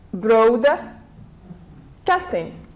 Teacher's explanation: have broad casting it's a compound noun Broad and casting so as we have seen with compound nouns we stress always on the first one